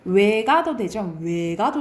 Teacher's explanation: 외랑 위는 단모음인데 얘를 이중모음으로 발음할 수 있다이 말이야